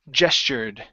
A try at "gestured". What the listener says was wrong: Okay, give me a D sound at the end.